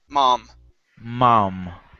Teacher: instead of mom, mo, it's ma, mom, with an ah sound.